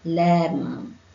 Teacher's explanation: Kemudian berakhir dengan mim. Kita akan tutup mulut kita, bibir kita.